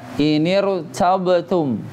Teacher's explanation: Ro-nya bacaannya dengan bacaan tebal. Ro yang sukun itu dibacanya bacaan tebal. Kenapa? Karena dia didahului dengan hamzah wasol.